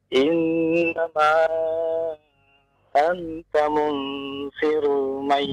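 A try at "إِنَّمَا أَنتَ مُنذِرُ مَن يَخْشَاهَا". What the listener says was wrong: Zal, kembali zal lagi. Munziru, bukan munsiru, bukan munziru, zi.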